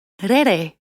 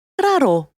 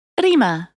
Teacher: The R is rolled, like in Spanish or Italian.